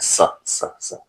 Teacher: जीभ जो है दांत के पास जाकर के टच करती है, यानी ध्वनियों को अवरुद्ध करती है दांत के सहारे जीवा, तो ये स निकलता है, स स स।